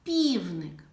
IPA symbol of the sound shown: п‘